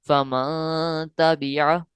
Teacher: ناک کے بانسے میں نون ساکن کی آواز کو چھپا لینا ہے، نون ساکن کو ظاہر نہیں کرنا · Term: اخفا